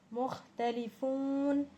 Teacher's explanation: فون میں ہم کھینچ رہے ہیں کیونکہ فو میں واو ساکن سے پہلے پیش ہے اور یہ حرف علت ہے، اس کو دوسرا نام حرف مدہ ہے، اس لیے ہم اس کو کھینچ کر پڑھ رہے ہیں اور آخر میں ہم وقف کر رہے ہیں۔